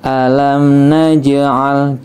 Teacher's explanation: ja-nya atau jimnya ini dipantulkan ya, karena dia sukun. Qalqalah sugro ya.